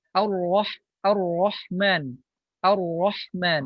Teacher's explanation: Kalau ro yang tebal itu adalah getarannya adalah cukup satu.